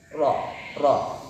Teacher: ujung lidah mengarah dekat punggungnya kemudian dipertemukan dengan langit-langit bagian depan sesudah makhraj Nun